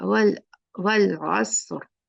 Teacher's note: असर नहीं होगा, वल वल आसर, रा हेवी करके रुकना